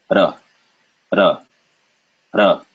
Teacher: It's called a trill, meaning your tongue flicks up, hits your gum very briefly, it like slaps it, and then it goes back down